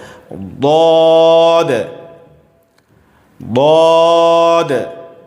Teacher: ہیں، داد پڑھ دیتے ہیں، اس طرح سے نہیں پڑھنا ہے، اس کو موٹی آواز میں زبان کا کنارہ داڑھ سے ٹچ کر کے پڑھنا ہے